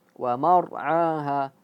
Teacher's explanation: Wa mar'aha, tebal ya. Ketika ra sukun menjadi tebal. Wa mar'aha.